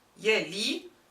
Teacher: Yali, the waaw is dropped and prefixed with a ya. Yali, the middle radical stays and the ya turns to a long vowel. It just loses its fatha.